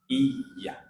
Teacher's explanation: huruf ya itu keluar dari tengah lidah dia. Ya, lidahnya agak naik ke atas, yang tengah ini naikkan ke atas, mendekat ke langit-langit